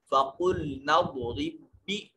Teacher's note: نون کو ضاد کے ساتھ ملا رہے ہیں، اس وجہ سے یہ الف مدہ نہیں ہوگا۔ فَقُلْنَا اضْرِبْ، را کو پھر آگے والے با کے ساتھ ملائیں گے، تو دو حروف ایک جنس کے ایک جگہ اکٹھے ہوئے تھے، پہلا ساکن دوسرا متحرک، تو پہلے کو دوسرے میں ملا دیا، ادغام کہتے ہیں۔